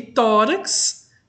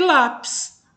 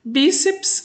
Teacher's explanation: paroxítona são palavras em que a sílaba tônica é a penúltima Ou seja a sílaba mais forte é a penúltima